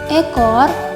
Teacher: fonem vokal E yang berada di atas, tengah, depan, tak bundar, yang direalisasikan dengan bunyi E pada contoh kata ekor, yang distribusi fonemnya berada di awal kata.